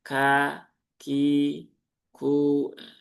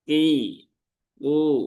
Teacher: kalau tidak keluar hamesnya ketika dalam kondisi kasroh atau dhammah, dia akan cenderung berubah ke huruf qaf